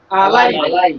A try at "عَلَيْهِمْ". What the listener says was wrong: হামিম জের কি হলো আলাইহিম